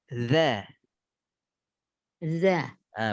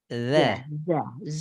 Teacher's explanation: Ada celah antara gigi dengan lidah. Di celah itulah ngalir suara kita. Disitulah mengalir sempurna.